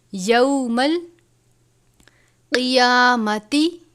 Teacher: قاف ہے حروف مستعلیہ میں سے پر پڑھا جاتا ہے. قیامتی فیما کانو، واو سے پہلے پیش ہے واو مدہ، اس کو نون نہیں پڑھنا، یعنی نون کی آواز کو آپ نے ناک میں نہیں لے کر جانا بلکہ کانو اتنا پڑھنا ہے.